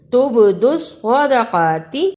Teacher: با پہ قلقلہ بھی کرنا ہے اور صاد کو موٹا بھی پڑھنا ہے۔